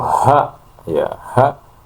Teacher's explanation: A ya a beda kalau ha ya ha itu terdapat hembusan nafas · ha itu terdapat hembusan nafas sehingga mengharuskan pita suara autor as-sautiyah itu terbuka.